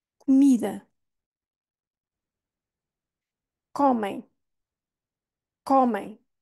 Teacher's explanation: então é tudo vai convergir para mim comida comida comem comem este o aqui é aberto porquê é aí que está a rainha a silaba tónica e este som final é um som nasal o m quando